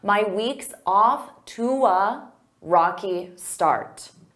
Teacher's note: instead of saying to a, I can combine those together with a w, to. So I use that w to glide.